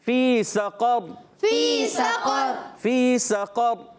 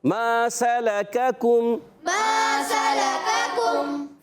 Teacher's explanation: اب یہاں قاف موٹا ہے، اس کو موٹا کریں گے، پہلے 2 کاف باریک رکھیں گے